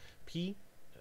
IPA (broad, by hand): p